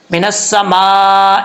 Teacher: سین سیٹی کے ساتھ پڑھا جائے گا، اور مد متصل 5 الف کے برابر لمبا کریں گے ، من السماء، اے نہیں پڑھنا، ای حمزہ زیر ای، ٹھیک